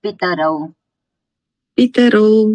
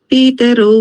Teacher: પી દીર્ઘ નથી પી તમે દીર્ઘ બોલો છો એ તમારે ધ્યાન રાખવાનું કે તમે દીર્ઘ બોલો છો કે રસ્વ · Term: શોર્ટ